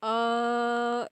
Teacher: ओ जो है वह प्लुत माना जाएगा और इसको जब आप बोलेंगे तो खींच कर बोला जाता है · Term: प्लुत स्वर